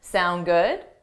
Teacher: So native speakers just take the sound good, but you have to add a rising intonation to show it's a question.